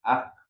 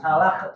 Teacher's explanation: Jadi kalau kaf itu betul, kaf itu ada hamsnya, ka juga ada hamsnya ya